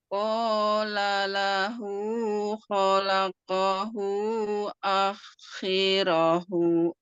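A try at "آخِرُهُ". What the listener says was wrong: A-nya kurang.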